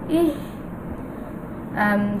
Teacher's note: এই হাটা হলো হলকের শুরু থেকে উচ্চারিত হবে। হালকা একটু এরকম একটা শব্দ হবে।